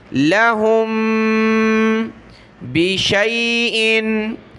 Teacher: मीम साकिन के बाद बा है तो यहाँ नाक में आवाज़ पैदा करेंगे